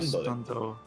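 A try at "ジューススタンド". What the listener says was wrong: You were very insistent on keeping the two Su's together. When in fact that is exactly where you want to split it. Justando desu.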